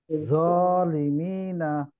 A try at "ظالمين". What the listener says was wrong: জ উচ্চারণ করছে, ওটা দ হবে, নিচে একটু দাঁতে লাগবে না, সামনের দিকে লাগবে, হ্যাঁ।